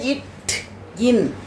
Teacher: தோன்றுகின்றன அடுத்தது இட் இன் இது நாவின் நுனி இட் இன் அப்படின்னு சொல்லும்போது இந்த நாக்கோட நுனி என்ன பண்ணுது அன்னத்தின் நுனியை தொடுகிறது இத் இன் அப்படின்னு சொல்லும்போது அன்னம் இருக்குல்ல மேல்வாய் மேல்வாயின் அந்த நுனிப்பகுதியை நாக்கின்